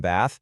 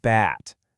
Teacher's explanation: without that th airflow, taking a nice relaxing warm bath magically turns into a creepy flying bat